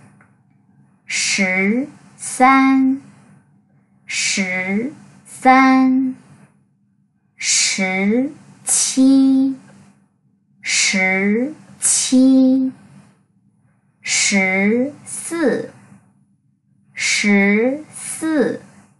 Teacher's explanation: Chúng ta sẽ chề môi ra một chút xíu. Lưỡi các bạn cong lên trên, cong lên phần hàm bên trên, và chúng ta sẽ đọc là sư, đọc giống cái sờ nặng. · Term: âm SH